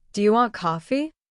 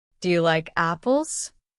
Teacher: when I ask a question, my voice goes up.